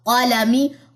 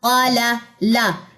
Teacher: قاف کہاں سے نکلتا ہے؟ یہ ہے جی ہمارے پاس اقصی لسان سے، یعنی کہ زبان کی جڑ سے قاف موٹا پڑا جائے گا